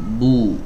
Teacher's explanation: di huruf ba itu startnya dimulai dari mingkem dulu mulutnya, nah, baru dimonyongkan · huruf ba itu makhrajnya ada di dua bibir, nggak dimonyongkan, mingkem biasa, baru beralih ke domahnya, bu. Ya, nah terkadang ada yang mengucapkan huruf ba ini dari dua bibir betul, tapi mulutnya udah dimonyongkan, padahal belum juga masuk ke hurufnya.